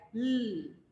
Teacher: Lateral approximate, produced by the obstruction of airstream at a point along with the center of the oral tract with incomplete closure between one or both sides of the tongue and the roof of the tongue, like l. So air is coming from the sides also.